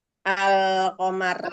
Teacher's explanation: yang namanya alif lam qamariah atau izhar qamariyah dibaca jelas